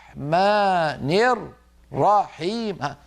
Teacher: الراء المشدده فك الادغام صار كل راء لوحدها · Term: تمطيط الشد